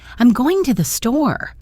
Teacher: Voice rises in pitch and energy.